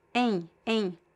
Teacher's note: So I have a nasal def thong. A a and at the end there is no m or n sound but it's closer to n